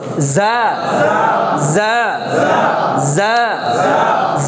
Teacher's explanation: যা হচ্ছে একটু এই দুইটা মাঝামাঝি, জিম এবং জালের মাঝামাঝি কি যা, যাটা হচ্ছে জিহ্বার আগা নিচের দাঁতের আগার সাথে লাগবে